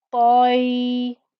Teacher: Then you have the thick, heavy ta with the fatha joining to the ya